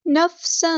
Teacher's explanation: تنوین کی آواز کو یہاں چھپا دینا کیونکہ یہاں پہ اخفا ہو رہا ہے · فا کو ہم نے دال کے ساتھ ملا دینا ہے، حمزۃ الوصل ہمارا ڈراپ ہو جائے گا